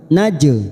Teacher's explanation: jim sukun qalqalah sugro karena mati asli di tengah kalimat, kita pantulkan